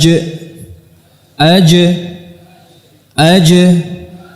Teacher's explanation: dia dari tengah lidah bertemu dengan Tengah langit-langit atas atau di langit-langit keras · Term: gym